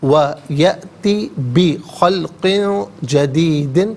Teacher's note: ویأتی میں حمزہ ساکن ہے، جھٹکے کے ساتھ پڑھا جائے گا